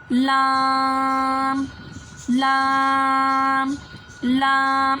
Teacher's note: लाम ज़ुबान का किनारा और ज़वाहिक से स्नाया तक के मसूड़ों से अदा होता है